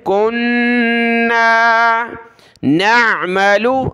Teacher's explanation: نون پر غنہ ہے، ناک میں آواز پیدا کریں گے